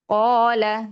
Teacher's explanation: Kemudian kasrah sempurnakan di, rahangnya turun, tengah lidahnya naik nggak di, ya. Qala setelahnya ada huruf isti'la, kemudian ada alifat, maka dibacanya tebal